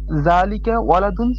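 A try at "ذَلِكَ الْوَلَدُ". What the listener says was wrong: এখানে আলিফ লাম আছে, এটা তো বোঝা যাচ্ছে না আপনার জালিকা বলার দ্বারা। ওয়ালাদুনের শুরুতে আলিফ লাম আছে না, এটা আলিফ লামটা বোঝানোর জন্য তো লামটা। হ্যাঁ, জালিকাল ওয়ালাদু।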